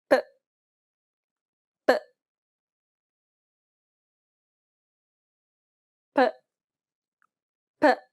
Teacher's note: Similar to the K sound from the previous lesson. This is also an unaspirated P sound, meaning there shouldn't be a burst of air as you pronounce this sound.